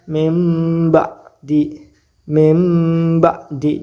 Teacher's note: Jadi suara ba-nya nggak ada, diganti menjadi mim, mim ba'di, seperti itu ya. Nun mati bertemu dengan ba, hukum bacanya iklab, cara bacanya dibaca menjadi mim, dibalik. Iklab itu membalik menjadi mim, mim ba'di.